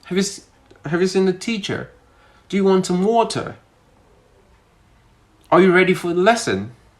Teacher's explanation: For British people, it's kind of like, it's still a rising tone, but it's kind of like it's relaxed.